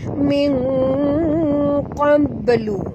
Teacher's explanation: Nun mati bertemu qaf, kita sorokkan bunyi nun ini pada kadar separuh ke dalam huruf qaf disertai dengung ikhfa haqiqi